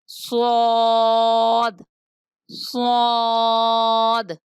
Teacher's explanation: صاد کا مخرج زبان کی نوک اور اوپر نیچے کے دونوں دانت